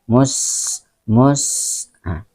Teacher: Ketika lafaz sa itu maka diikuti dengan sedikit keluar angin, ya. Mus. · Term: hamz atau safir